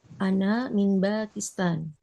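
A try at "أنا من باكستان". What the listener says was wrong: Pakistan, tak panjang Pakistan. Sukunkan. Pakistan, sukunkan saja.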